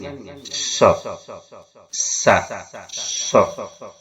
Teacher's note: Dan dia sofir, ada siulannya.